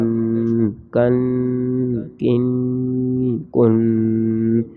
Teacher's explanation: یہ باریک کاف ہے، پتلا کر کے پڑھیں گے پہلے غننے کے ساتھ۔ کاف دو زبر کن، کاف دو زیر کن، کاف دو پیش کن، کن کن کن بغیر غننے کے، کاف دو زبر کن، کاف دو زیر کن، کاف دو پیش کن، کن کن کن۔